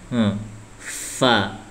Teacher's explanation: antara gigi atas sama bibir bawah ditempel